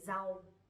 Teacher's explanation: Nowadays we don't really pronounce that strongly, but instead we say z, like chữ z.